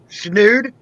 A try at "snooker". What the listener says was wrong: No, without the D. Snoo. And then cur on the end. Snooker. Snooker.